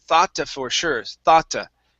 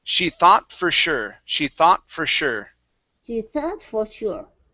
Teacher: Okay, so afterthought on this one here, you said thoughta for sure, thoughta. Okay, so let's take out that extra sound in between the T and the F.